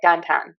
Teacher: we kind of flatten that diphthong and make it much simpler